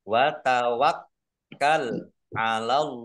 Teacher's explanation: dengan huruf wau bacaan izhar syafawi dibaca jelas juga Wat tawakal kafnya dibaca dobel ada tasdidnya